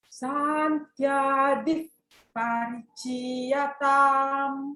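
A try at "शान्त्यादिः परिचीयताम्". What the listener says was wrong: What kind of sibilance is that? Shantyadif parichiyatam.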